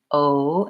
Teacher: with the oh we have rounding oh and our jaw is fairly closed · For you, if you're trying to get the ah vowel without it being an O, the difference there is that with the O, we have rounding, O, and our jaw is fairly closed.